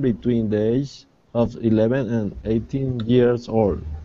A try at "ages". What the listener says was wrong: Okay, remember also not to swallow the S. Ages.